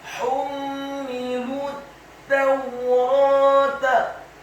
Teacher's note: huruf ra-nya dibaca tafkhim, tebal, fathah dua harokat karena setelahnya ada alif